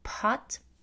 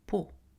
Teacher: En français, et contrairement à l'anglais, on n'aspire pas les occlusives sourdes en début de syllabe. Donc par exemple, en anglais, on dirait pot avec de l'air qui sort p, mais en français, on dit pot.